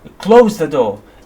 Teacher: In this case we have a falling intonation because in the case of the commands we have a falling intonation at the end.